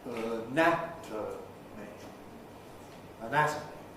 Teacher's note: Because the syllable nat is stressed in anatomy, it keeps a strong vowel, whereas the syllable before and after weaken